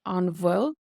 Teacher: So the BH does have a V sound in Munster Irish